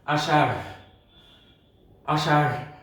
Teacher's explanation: তাহলে আমরা দেখতে পাচ্ছি যে আমরা তাদেরকে যে তথ্য দিতে পারছি যে শয়ের মধ্যে আষাঢ় বানানে আমাদের মূর্ধন্য স হবে এবং র। এই রয়ের একটি উচ্চারণ আছে, এটিকে মহাপ্রাণ বলা হয়। এই র উচ্চারণ করতে হলে একটি হ যুক্ত করতে হবে, আষাঢ়, আষাঢ় হ উচ্চারণ করতে হবে।